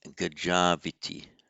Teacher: Where the word ends in an au, followed by a vowel, the au simply becomes av, and joins to the next vowel.